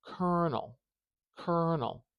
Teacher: do you hear how long that ER is Kernel we want to put the stress marker before that syllable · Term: syllable stress